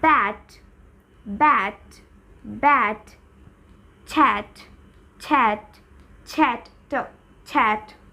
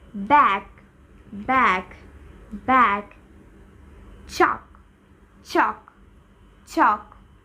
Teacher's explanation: now let's move on rule 3 last position in any word if any word ends with PTK sound then PTK will not be aspirated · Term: not aspirated